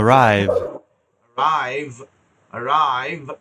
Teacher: ভা সাউন্ডে শেষ হচ্ছে, কিন্তু দাঁতে ঠোঁটে শেষ হবে, দুই ঠোঁটে শেষ করবেন না